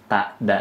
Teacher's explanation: ta dengan dal ini satu makharijul huruf, yaitu ujung lidahnya itu berada di perbatasan gigi dan gusi.